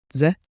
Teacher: A quick DZE like J with a soft D.